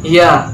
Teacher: Makhrajul huruf ya terletak pada tengah-tengah lidah dengan langit-langit. Sedangkan sifatul huruf ya terdiri dari 5 sifat, yaitu jahr, nafas ditahan. · rokhwah, yaitu lunak dan suara tidak tertahan.